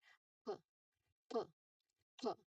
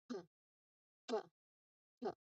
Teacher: So to make this particular sound, you press your two lips top and bottom together. So the lips must stop all the air completely here. P. Now um you try to quickly release the lips and push the air out. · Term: voiceless sound